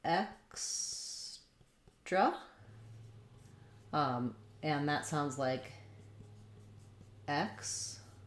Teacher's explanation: clear vowel on the X syllable, unstressed reduced vowel on the tra syllable